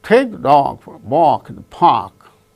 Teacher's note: only take dog walk park only these words gain stress because they are the content words